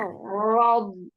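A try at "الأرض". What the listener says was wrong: Titik tumpunya masih di depan itu di depan bukan di huruf D.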